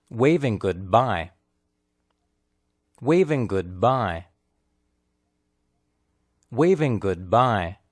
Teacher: In this sentence, wave and bye are clearly stressed, while the word good is spoken lightly